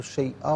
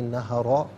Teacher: اسے شیئن پڑھیں گے، وف کی صورت میں شیئا پڑھا جائے گا، اور بلکہ شیئاؤں پڑھا جائے گا کہ ناظرین حمزہ پر دو زبر کی تنوین ہے، اسے واو کے ساتھ ملا کر واو کی آواز کو ادا کیا جائے گا، شیئاؤں۔ اور اگر یہاں وقف کریں گے تو شیئا پڑھیں گے کہ دو زبر کی تنوین وقف میں الف سے چینج ہو جاتی ہے